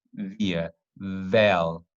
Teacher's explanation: there is vibration of the vocal cords. You see, via, vel, you see, there is a voice. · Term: voiced